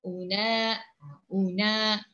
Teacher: Sebab hukumnya mat asli, jadi bacaannya perlu perlu dibaca dengan kadar harakat sebanyak dua harakat.